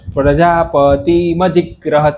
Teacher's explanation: જીક કરીને આપણી જીભ જે જ્યાં જીભ કે કંઠને અડી રહી છે ગકાર સ્થાનમાં કંઠમાં તે જીક પછી જ્યાં સુધી ગ્રહત ના નીકળે ત્યાં સુધી એને ચોટાડી રાખવાની છે